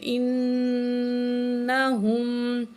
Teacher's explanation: حمزہ زیر نون ان، نون زبرنا، ہا پیش میم ہم، انہم۔ تو نون کے اوپر کیا ہے؟ تشدید ہے، تو نون میں ہم غنہ کریں گے